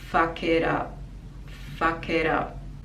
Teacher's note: the t becomes like a d sound and connecting these words together